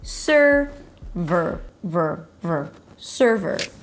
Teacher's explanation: Primary stress on the first syllable